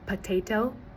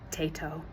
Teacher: weak syllable deletion, where the weak syllable in a word is eliminated. Like instead of saying potato, they might just say tato.